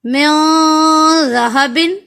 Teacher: زال کی ادائیگی کے وقت ہم نے زبان کو دونوں دانتوں کے درمیان میں لانا ہے